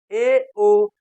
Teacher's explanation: उच्चारण करते समय जब जीभ तालु के नीचे मतलब ऊपर वाले दांत के बराबर उठे तो उस समय मुख द्वार आधा संकुचित होता है। ऐसी स्थिति में उच्चरित होने वाले स्वर को अर्धसमृत स्वर कहा जाता है।